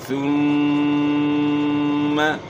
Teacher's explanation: ثم، پھر آپ نے اس کو ثم نہیں پڑھنا، ثا پڑھنی ہے، جدھر سے ذال ادا ہوتا ہے ادھر سے ثا بھی ادا ہوتی ہے، اسی مخرج سے۔ زبان کی نوک ثنائے اولیاء کے اندرونی کنارے ثا پڑھنا ہے، نیچے دانتوں کے ساتھ زبان ٹچ نہ ہو۔